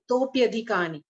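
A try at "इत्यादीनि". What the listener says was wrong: Don't pronounce the a. Where is the all this additional sound? First clue is we see a okara with a avagraha.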